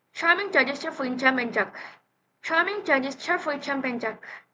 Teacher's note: Both consonants are post-alveolar affricate, meaning their tip or blade of the tongue close to the alveolar ridge, while the front of the tongue is concave to the roof of the mouth.